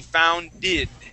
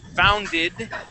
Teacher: you don't want to use an e sound you want to use a short I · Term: short I sound